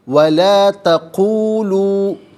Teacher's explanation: وَلَا تَقُولُوا ملا کر پڑھیں گے، وَلَا تَقُولُوا، تقولو میں قو اور لو، یہاں دونوں مقامات پر آپ دیکھیں واو مدہ ہے، تو ایک الف کی مقدار کھینچ کر پڑھا جائے گا